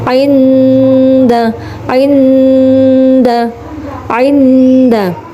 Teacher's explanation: ada nun sukun bertemu dengan huruf Dal ya cara bacanya adalah samar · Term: Ikhfa Haqiqi